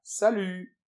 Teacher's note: on ne prononce pas le T final